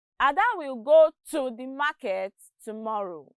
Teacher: Notice that to is stressed.